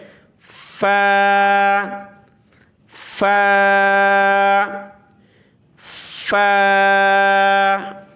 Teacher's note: اوپر کے جو دانت ہیں یہ نچلے ہونٹ سے ٹچ ہوں گے، نہیں، نچلا ہونٹ جو ہے اوپر کے دانت سے سیم اسی طرح ٹھیک ہے، اوپر کے دانت جو ہیں نچلے ہونٹ سے ٹچ ہوئے · जो है ऊपर के दांत से सेम इसी तरह ठीक है ऊपर के दांत जो है निचले होट से टच हुए